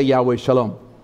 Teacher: Al om it's spelled s al om s al om and the S is pronounced with an SH sound and that's actually called a shin in Hebrew